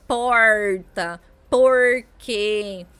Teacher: Mas vale lembrar que no interior de São Paulo e também em muitas regiões periféricas, o R é aquele R que chamamos de retroflexo, um R mais original do Brasil, que tem influência indígena